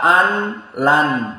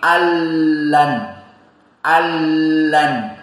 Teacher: Nun Sakinah Huna dimasukkan kepada lam maka tidak dibaca an LAN tapi Allan Allan paham ini idgham